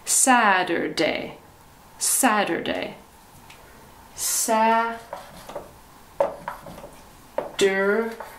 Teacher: in the united states we say saturday it sounds like a d